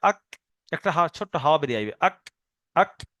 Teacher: এই কাফের মাখরাজ হলো এই জিভের গোড়ায় থেকে একটু সামনের দিকে সরে আসতে হবে, একটুখানি সামনের দিকে সরে এসে ওপরের তালুতে লেগে উচ্চারণ হয়। তাহলে জিভের গোড়া থেকে একটু সামনের দিকে আগে বেড়ে ওপরের তালুতে লেগে উচ্চারণ হয় কাফ।